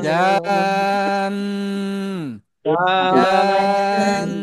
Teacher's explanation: জিমে চার আলিফ টেনে তারপরে নুনে এই যে গুণনাটা করব